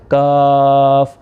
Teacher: ہے، کتاب کش والا جو کاف ہے یہ باریک کرنا ہے، تالو کا سخت حصہ اس میں صرف استعمال ہوگا